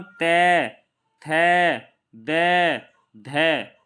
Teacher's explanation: तय, थ, द, ध, ठीक है, बोलते हैं न। तो जब इनका हम उच्चारण करते हैं तो हमारी जो जीभ है वो ऊपर वाले दांतों से जाकर लगती है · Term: दंतीय व्यंजन